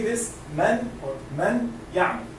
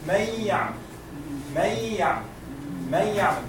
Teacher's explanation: We are not going to pronounce any kind of noon. We are going to hide it all